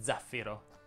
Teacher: si dice zaffiro con l'accento sulla i e la z e sonora